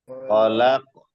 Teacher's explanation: খলাক কলকলা হবে শেষে।